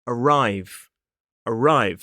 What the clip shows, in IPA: əˈraɪv